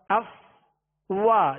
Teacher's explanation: فا کو اس کے مخرج سے ادا کیا کہ اوپر کے دانتوں کے کنارے اور نچلے ہونٹ کا تر حصہ